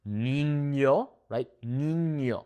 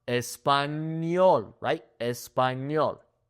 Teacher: We have the ñ, which makes an N and a Y sound put together.